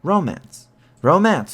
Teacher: normal pronunciation puts the stress in romance on the first syllable and thus makes the word a trochaic stressed unstressed foot